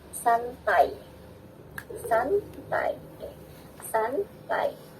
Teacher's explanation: Kalau dia bukan diftong, mestinya dibacanya santai. Tapi karena orang Indonesia melafalkannya santai, huruf I atau bunyi I itu berubah menjadi bunyi ya, maka AI di sini bisa dikatakan sebagai diftong.